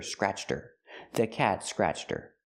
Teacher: Her is not a stressed word. So the h is silent.